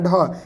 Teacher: ये महाप्राण है, इसको ज़्यादा बोलने में मुख से हवा निकलती है